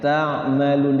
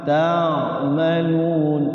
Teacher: Jadi ain sukun itu ketika dibaca sukunnya itu dia ngalir, nggak boleh mantul gitu, nggak boleh. Jadi dia ngalir ta'malun lembut.